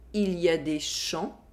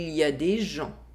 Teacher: Here, there is a difference in consonant sound. We have the [ʃ] sound in the first sentence, and the [ʒ] sound in the second sentence.